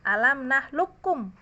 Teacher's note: Qafnya nggak dibaca sama sekali. Ya, artinya semua sifat qaf diidghamkan ke huruf kaf, dimasukkan ke huruf kaf tanpa tersisa qafnya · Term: idgham kamil